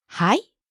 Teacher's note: If you say it with rising intonation though, it becomes a question.